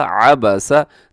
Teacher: عین زبر ع، با زبر با، سین زبر سا، عبسا. تینوں حروف باریک پڑھے جائیں گے، اس میں کوئی بھی موٹا حرف نہیں ہے